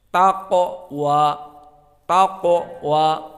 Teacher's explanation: qaf di sini mufakhamah juga disukunkan di tengah menjadi qalqalah as-sughra